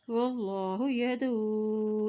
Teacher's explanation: یہاں اللہ کا نام موٹا ادا کیا جائے گا کیونکہ اللہ کے نام سے پہلے زبر ہے